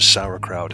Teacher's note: pronounced sauna, with a diphthong drawing out the transition from the A to the U